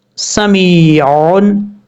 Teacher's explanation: اگر یا ساکن سے پہلے زیر ہو تو یا مدہ ہوگا، اور زبر ہو تو یا لین ہوگا. یہاں پر یا ساکن سے پہلے زیر ہے اس لیے یا مدہ ہوگا. ایک الف کی مقدار اس کو لمبا کر کے پڑھیں گے